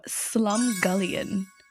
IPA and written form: slʌmˈɡʌljən (Slumgullion)